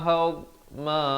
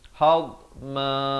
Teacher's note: Dad ini makhrajnya di tepi lidah, tapi jangan diberikan lantunan, dia bukan huruf qalqalah